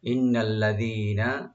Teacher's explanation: ইন্না নুন মুসাদ্দাদ এখানে ওয়াজিব গুন্না, আল্লাযীনা দি একালে টানবেন, নুনে কোনো টান নাই।